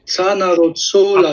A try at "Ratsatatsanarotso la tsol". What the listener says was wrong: faut pas rater le ra. Ratsatatsanarotso la tsol.